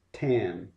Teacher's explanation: Your tongue reaches completely up and stops the airflow, touching a place towards the front of your mouth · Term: t sound